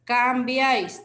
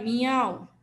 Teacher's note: una vocal cerrada una vocal abierta y una vocal cerrada ya para que se forme triptongos debe cumplir con esta regla